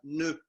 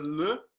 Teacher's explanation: c'est une alternance entre la langue qui va se placer derrière les dents au niveau du haut du palais, et les lèvres qui vont se joindre pour faire le m. En fin de compte, c'est ça qui se passe relativement vite.